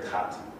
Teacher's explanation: south of England, you get a much lower vowel that sounds like cat.